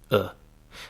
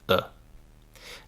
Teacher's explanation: the lazy vowel that you hear all the time in English and which is called schwa